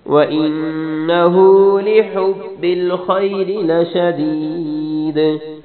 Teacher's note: لشدید آخر میں کلکلا کرنا ہے